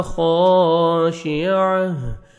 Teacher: अब सौरुहा खाशिअह खा को मोटा करके पढ़ना है, अलिफ मद्दा 1 सेकंड आपने खा को खींचना भी है, आइन को हा के साथ मिलाएंगे, ता को हा में चेंज करेंगे, आइन ज़बर हा जज़म आह, लास्ट में हा का साउंड आएगा।